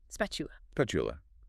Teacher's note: sometimes that t sound gets a bit soft, almost like chi.